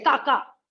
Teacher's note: if I drive away annoying animals and I say ka ka, so that is tone 6, short tone